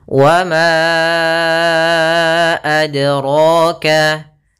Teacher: Yaitu kita panjangkan 4 atau 5 harokat. Maka ma-nya kita panjangkan dahulu baru kita baca a-nya. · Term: mad jaiz munfasil